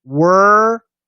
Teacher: try and get rid of that oh world so instead of an o use a schwa